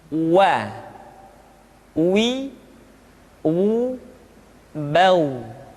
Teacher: Selanjutnya huruf wa diucapkan dengan cara memonyongkan dua bibir kita.